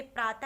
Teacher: ह की तरह इसका उच्चारण निकलता है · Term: विसर्ग